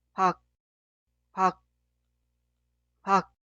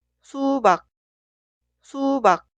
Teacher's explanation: Pronunciar 기억 como consonante final. Al final de pronunciar, detener el flujo de aire. Por eso es casi inaudible. Esta sílaba se pronuncia 박, 박, 박.